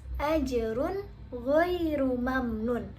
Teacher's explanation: huruf gho di sini merupakan salah satu huruf izhar yang dibaca jelas